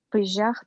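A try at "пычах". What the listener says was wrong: Только тут не же, а че. Пыщах.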